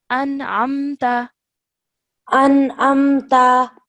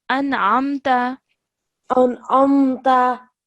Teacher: try and produce that ain sound from your throat